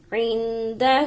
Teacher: ہا کے اوپر الٹا پیش کے ساتھ مد ہے تو زیادہ کھینچ کے پڑھیں گے